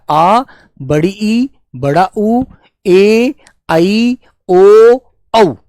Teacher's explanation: ये है हमारे दीर्घ स्वर जिनमें बेटा दो गुना समय लगता है